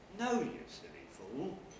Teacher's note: the fall is on the nucleus the rise is towards the end of the tail